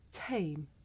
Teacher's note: in english we say the sound at the beginning of the word tame with a big puff of air